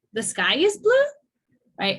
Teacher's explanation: when there is a doubt in your mind, then it's a rise in intonation.